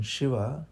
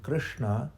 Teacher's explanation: So sh, as in Shiva, is palatal. When you just touch the tongue with your, touch the roof of the mouth with your tongue.